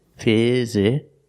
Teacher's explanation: The first two vowels are the short I sound, like this is.